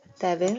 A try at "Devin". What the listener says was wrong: it's not Devil. Okay, it's Devin. you change letter N to letter L, it will already sound like the devil.